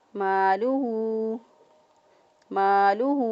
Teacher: مالہ، یہ جو اس کے اوپر مد ہے یہ چھوٹی مد ہے، اس مد کو 3 حرکات کے برابر لمبا کر کے پڑھ سکتے ہیں